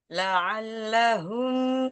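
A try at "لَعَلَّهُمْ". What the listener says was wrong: la'allahum ringanin lagi jangan diberatin jangan la'allahum sama dengan lanya aja sejajarin lah lahum la'allahum masih hum gitu hum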